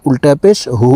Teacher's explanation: হার উপরে উল্টা পেশ আছে তাই ঠোঁট গোল করে এক আলিফ টেনে পড়বো